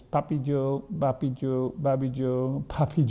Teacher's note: there's just a single bilabial stop voicing is pretty free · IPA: [papicu ~ bapicu ~ babicu ~ pʰapʰicu etc]